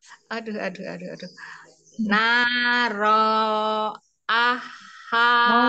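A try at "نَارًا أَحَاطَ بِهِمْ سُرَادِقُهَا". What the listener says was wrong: naron naronnya jangan panjang naron aha tobihim suro di kuha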